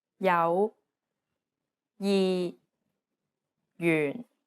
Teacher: although it's represented as a j it actually sounds like an English Y sound so whenever you see the letter J in yudping remember that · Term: J consonant